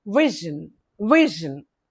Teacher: two syllables stress the first syllable is stressed.